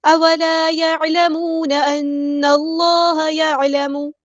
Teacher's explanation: اولا الف مد آ گئی ہے تو مد اصلی کریں گے. يعلمون عین کو مستحل ہے یعنی میڈل تھروٹ سے ادا کریں گے.